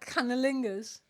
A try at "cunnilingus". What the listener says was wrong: Cunnilingus. Canny. Cannilingus. Cunnilingus. C-U. You said canny with a C-A. Cun.